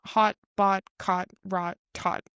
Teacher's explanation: all of these rhyme exactly. There's no difference in the a sound in the middle. So if you're able to say the word hot, then you're able to say these other words just imitating the same vowel sound.